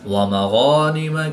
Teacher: غین کو حلق کے اوپر والے حصہ سے ادا کریں گے